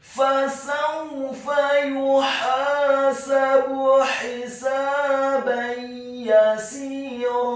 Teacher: Huruf sin-nya dibaca kasrah 2 harokat karena setelahnya ada huruf ya sukun. Dan di akhir ayat huruf ra-nya dibaca tafkhim, tebal, fathah 2 harokat karena setelahnya ada alif